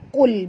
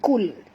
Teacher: huruf qaf tebal ya, qul bukan kul.